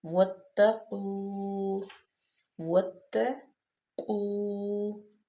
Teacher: واتقوا، واتقوا، واو جو ہے اس پہ زبر ہے، الف جو ہے وہ زائد ہے، یعنی کہ اس پہ زبر زیر پیش یا نہ ہی جزم ہے۔ تو واو کو ہم ڈائریکٹ تا میں ملائیں گے کیونکہ تا جو ہے وہ مشدد ہے